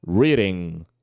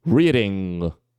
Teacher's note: a gente vai tentar pegar a parte de trás da da nossa língua e vai fechar ele aqui com a úvula